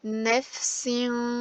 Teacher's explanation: sonra nun gelmiş bunu tutuyoruz tenvinden sonra ihfa harflerinden ş gelmiş Ben bu tenvini okurken gizleyerek gunneli bir şekilde genizden tutarak okuyacağım